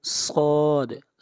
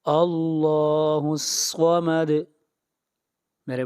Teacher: صاد کو موٹا پڑھیں گے، صاد حروف مستعلیہ میں سے ہے